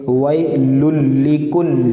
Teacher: آئیے پہلی آیت، ویل لکل ہمزۃ لمزہ، واو یا زبر لکل، دیکھیے لام اور یہاں پہ 3 لام ہے، اور چونکہ لام پر تشدید ہے، یہ دونوں لام تو یہ 2 لام پڑھے جائیں گے